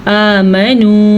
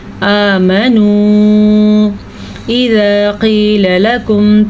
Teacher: یہ مد 3 حرکات عربیہ کے برابر ہے اور یہ واو ملا کے 4 ہو گئے